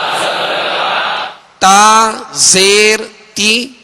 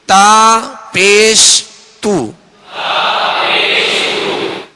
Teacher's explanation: जबर और जेर में त को अदा करते हुए होठ गोल ना हो और जब इस पर पेश होगा तो होठ गोल होंगे